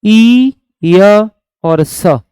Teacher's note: ये दोनों के दोनों य और स, ये मेरे भाई तालु से बोले जाते हैं।